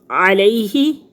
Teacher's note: یائے ساکن سے پہلے لفظ کے اوپر زبر ہے، تو یہ یائے لین ہے، 1 الف کے برابر اس کو لمبا کریں گے